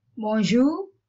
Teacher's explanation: The R is not pronounced too much.